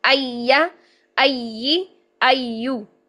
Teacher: زبان کے درمیان کو اوپر تالو کی طرف لے کر جانا ہے، لیکن اس میں تھوڑا سا گیپ رکھیں، اس میں فاصلہ رکھیں ، وہیں پہ یا کو ادا کریں نرمی کے ساتھ، ایا